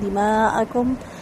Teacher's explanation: دماءکم مد واجب متصل ہے، 4 حرکت مد کو لمبا کریں گے